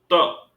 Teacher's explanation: ट, ट बोलते समय मूर्धा का स्पर्श किया। त, त बोलते समय दंत का स्पर्श किया हमारी जीभ ने